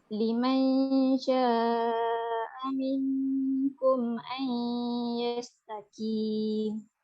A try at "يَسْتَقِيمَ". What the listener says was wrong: Yastaqim. Qaf tebal sikit. Jangan nifis sangat, bunyi macam kaf. Yastaqim kan? Yastaqim. Qaf bila dia baris atas dia lagi tebal. Qa. Contohnya qa kan. Bila baris bawah dia kurang sikit ketebalan dia. So bunyi dia qi. Bukan tebal sangat. Qi macam tu. Tapi awak tadi terbunyi kaf. Ki. Itu kaf. Yastaqim kaf. Yastaqim itu qaf.